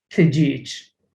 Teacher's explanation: when it is found at the end of the word, such as tijich, you say it with a ch